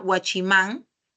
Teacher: mayor fuerza de voz en la última sílaba